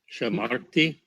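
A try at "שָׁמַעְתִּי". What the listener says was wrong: Shamati. Be careful that it's not shamar, but shama. Shamati. It's a ayin, not a rish.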